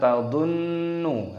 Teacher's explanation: Tadhunnu di sini ada nun tasdid, hukumnya dibaca ghunnah berdengung, maka dibaca tadhunnu, harus didengungkan dulu, ditekan.